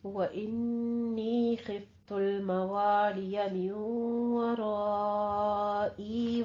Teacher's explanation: व इन्नी में गुन्ने वाजिबा, खिफ में खौ को पुर पढ़ना है और आगे है मीम वराई में इदगाम अल गुन्ना करते हुए रा को आपने मुफख्खम पढ़ना है। आगे मद्दे मुत्तसिल वाजिब जो है वो करनी है, 5 काउंट करने हैं।